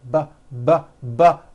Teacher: this time we'll add voicing by vibrating our vocal cords